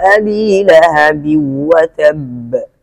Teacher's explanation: ادغام تام کیا، غنہ نہیں کیا